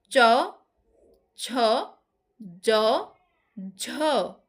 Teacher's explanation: এগুলো তালুতে গিয়ে বাধা পাচ্ছে, জিভটা তালুতে গিয়ে লাগছে, ফলে বাধার সৃষ্টি হচ্ছে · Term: তালু স্পৃষ্ট ব্যঞ্জন